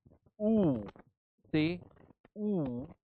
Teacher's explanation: your tongue goes back with a higher position